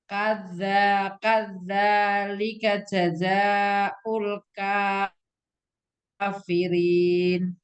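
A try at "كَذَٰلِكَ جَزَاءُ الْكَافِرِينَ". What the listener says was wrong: Kaza, zalnya tidak ada tasjid.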